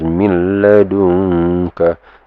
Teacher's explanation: The nun sound doesn't come out. Okay, it's basically lost already. So it's just min ladunka.